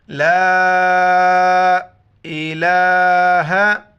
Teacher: دیکھیں یہاں پر لام ہے، الف مدہ ہے، الف مدہ کے اوپر جو ہے نا مد ہے، مد کو 5 الف مقدار کھینچنا ہے۔ لا الہ، لام پر کھڑا ہے، 1 الف مقدار کھینچنا ہے۔